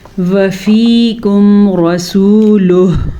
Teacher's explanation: را کو پر پڑھنا ہے, را پہ زبر کی وجہ سے